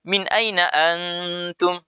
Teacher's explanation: Anda perlu didengungkan. Nun sukun ketemu ta itu dalam ilmu tajwid namanya ya ikhfa, harus ditahan 2 harakat.